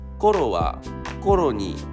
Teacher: The accent kernel is located in first mora of the word.